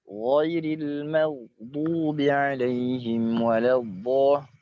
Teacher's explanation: Yang bagian paling atas yang dekat dengan pangkal lisan adalah huruf ghain dengan kho.